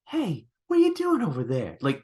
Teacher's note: His delivery is very breathy, but in just all the wrong ways.